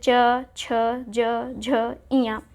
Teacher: जो च वर्ग के द्वारा बोला जाता है उसे हम तालव्य कहते हैं, क्योंकि ये तालु के द्वारा बोला जाता है।